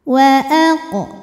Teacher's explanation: Kemudian ada hukum qalqalah sughra karena huruf qaf sukunnya sukun asli dan ada di tengah bacaan, maka dibaca dipantulkan dengan pantulan yang kecil.